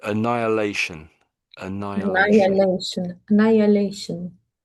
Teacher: So some people pronounce the H a little bit, I would say, but a lot of people don't really it's quite hard to hear the H in the middle